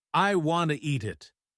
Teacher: the T in eat it kind of disappears when people say it fast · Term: connected speech